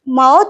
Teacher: I need to use both my upper lip and the lower lip here. So in the sense that we need to use even the lips also here.